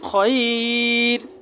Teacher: র সাকিন তার ডাইনে ইয়া সাকিন হয়েছে, যার কারণে র বারিক করে পড়া হয়েছে